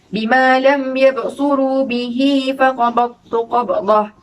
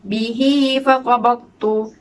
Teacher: Bihi 2 harakat sahaja. Tidak perlu dibaca dengan panjang. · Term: mad silah qasirah